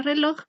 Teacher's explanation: el acento cae en la última sílaba, loj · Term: acento prosódico